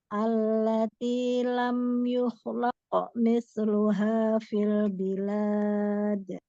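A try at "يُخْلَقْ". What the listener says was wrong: Yuh, tebalkan lagi untuk huruf kho, karena huruf kho mempunyai sifat isti'ala. Jadi pangkal lidah dinaikkan lagi, Bun. Kurang tebal baru. Yuhlaqo. Allati lam yuhlaqo mithluha fil bilad. Jadi sempurnakan lagi, nanti dilatih lagi untuk menebalkan huruf kho. Yuhlaqo.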